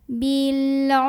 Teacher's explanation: Ra sukun dibaca secara tafkhim karena huruf sebelumnya dhammah, jadi tebal pangkal lidah naikkan.